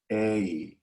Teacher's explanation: In an American accent, we never use that sound on its own. We would couple it with a little bit of this sound I, and that becomes what's called a diphthong, the di part meaning two.